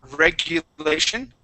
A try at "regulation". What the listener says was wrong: Okay, try not to roll your R on regulation.